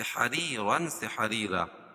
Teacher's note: یا ساکن سے پہلے را کے نیچے زیر ہے تو یا مدہ اور را باریک ہوگی. 2 زبر کی تنوین پر وقف کی صورت میں ایک زبر کے قائم مقام الف پڑھیں گے اور دوسری زبر اپنی حالت پر باقی رہے گی، سے حریرن سے حریرا.